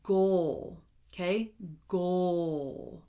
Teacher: It goes from the G to the O to the dark L, okay? Goal, like he scored a goal, right?